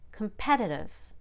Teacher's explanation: Because I'm not stressing C-O-M, I reduce it to C-U-M, come, competitive.